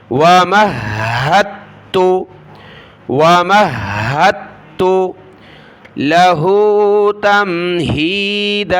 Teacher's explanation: میم کو ہا کے ساتھ, ہا کو سخت کیا تشدید کی وجہ سے, پھر ہا کو تا کے ساتھ ملانا ہے.